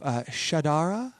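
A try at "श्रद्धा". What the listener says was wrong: Shadara! You were wrong. You added a vowel.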